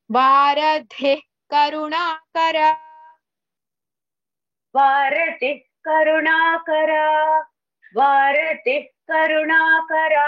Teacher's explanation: We have to pronounce it as half హా because in the next word the first letter is క · Visarga we have to pronounce it as half ha because in the next word the first letter is ka. Whenever there is a visarga before ka we have to pronounce it as ha, half ha.